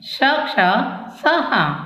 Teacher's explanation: उष्ण व्यंजन। इनके उच्चारण में मुंह से गर्म श्वास निकलती है। ये निम्नलिखित 4 हैं: श, क्ष, स, ह।